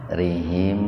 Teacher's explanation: Mim sukun bertemu wawu secara terpisah, jadi mimnya dibaca jelas di bibir biar terdengar jelas, tahan 2 ketukan. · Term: idhar syafawi